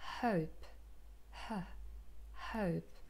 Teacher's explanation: the same when we form a fricative so the articulators here the vocal cords come a little bit closer and we can hear the air friction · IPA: /həʊp/